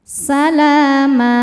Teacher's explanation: Ma mad iwad karena ada harokat fathah tanwin yang diberhentikan. Cara bacanya panjang 2 harokat.